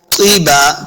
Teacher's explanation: तीबा तो हुरूफ़ मुस्तअलिया से है, हमने इसको मोटा करना है। तीबा, तीबा नहीं करेंगे, तो को मोटा पढ़ना है।